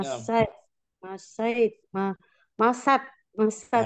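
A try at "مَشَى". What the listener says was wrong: Masya. Dibuang huruf ilatnya. Masya.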